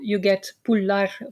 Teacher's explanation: In contrast, other suffixes take a back vowel, so the ler becomes a lar with a back a. In roots that have a back vowel, like pul has a back vowel, you get pullar for stamps.